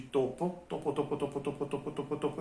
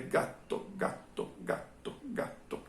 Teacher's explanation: uma pequena pausa é que acontece no meio da palavra gato já na outra palavra topo que significa rato não tem constante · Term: constante dupla